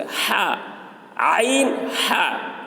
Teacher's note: عین، ہا یہ دونوں حلق کے درمیان والے حصے سے نکلتے ہیں